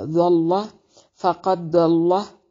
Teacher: फ़क़द काफ को मोटा दाल पे कलकला होगा। · द्वाद को मोटा और लाम को झटके से पढ़ना है।